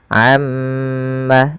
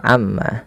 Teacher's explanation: tahan pada bunyi ma, amma, karena pada lafal tersebut ada yang dinamakan dengan bacaan gunnah